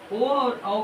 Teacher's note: ए और ए का होता है कंठ प्लस तालु से। ओ और औ का होता है कंठ प्लस ओष्ठ से।